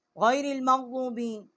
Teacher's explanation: غین جو ہے یہ ادنائی حلق سے اس کا مخرج ہے ، حروف حلقی ہے، ضاد جو ہے جب زبان ضاحک کے